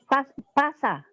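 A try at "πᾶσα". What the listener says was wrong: pasa, betul.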